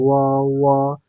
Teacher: व बोलने पर होठों पे सीधे व व। तो यानी कि यह व जो है हमारे होठों से हवा टकरा रही है, तो इसलिए इसका उच्चारण स्थान होठ हो जाएगा, ओष्ठ हो जाएगा।